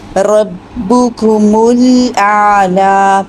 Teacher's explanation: با اور کاف کی پیش کے لیے ایک ہی رولنگ ہوگی، ایک ہی دفعہ ہونٹ گول ہوں گے، میم کے لیے ہونٹ سیدھے ہوں گے، دونوں ہونٹوں کو ملائیں گے، میم ادا ہوگا، اور پھر میم کی پیش کے لیے دوبارہ ہونٹ گول ہوں گے، اور پھر آگے لام پہ جا کے سیدھے کر لینے ہیں۔ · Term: 2 رولنگ